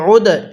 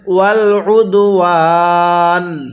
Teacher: আইনকে দালের সাথে লাগিয়ে ধাক্কা দেব